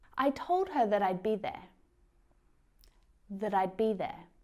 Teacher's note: when that is used as a conjunction to connect two clauses in a sentence together, then it's unstressed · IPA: /ðət/